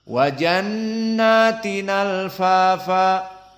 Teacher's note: Maka hamzah dihilangkan, tinggal lam. Al-fafa menjadi tinal fafa. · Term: naql